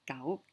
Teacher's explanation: Like gao, the mid-rising tone.